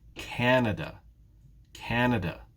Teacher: in the word canada though which syllable is stressed in this case it's the first syllable